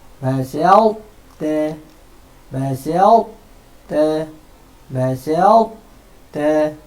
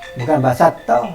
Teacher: Dia naik dia naik ta tapi tak lepas, qalqalah tak ada. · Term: idgham naqis